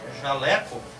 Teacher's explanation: Se eu tiver a palavra, por exemplo, jaleco, eu tenho uma palavra de três sílabas, em que a sílaba mais forte é a antes da última